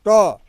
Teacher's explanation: आपकी जीवा जो है मुड़ करके छूती है तालु को ही, लेकिन वह ऐठा जा रही है, मुड़ जा रही है। तो इसका मतलब यह हो गया कि उसका उच्चारण स्थान आपका हो गया मूर्धा।